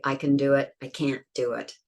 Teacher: normally we wouldn't stress the can, only the can't, because we stress negatives